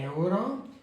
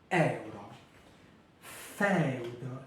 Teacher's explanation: Ici, la voyelle, la première voyelle, toujours, d'accord, porte l'accent et dans ce cas-là, elle est ouverte